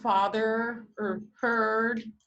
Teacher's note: that schwa with the squiggle because the r the following retroflex the following r is having an effect on the vowel sound such that it creates a new vowel sound